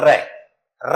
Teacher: जब इस वर्ण को बोलते हैं तो जीभ में क्या होती है कंपन उत्पन्न होती है इसलिए इसको क्या कहते हैं परं कंपित कहते हैं उसको क्या